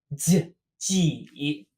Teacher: Very similar to j, but your tongue is instead flat against the bottom of your mouth.